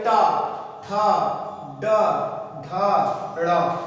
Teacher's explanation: जीभ जो होती है वो पलट के पीछे जाती है मुर्दा में